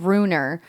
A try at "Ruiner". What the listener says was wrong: Runer? Runer. runes? A ruiner. runer sounds like you're saying the word rune like you're like you're someone who does stuff with runes. Ruiner. Ruiner.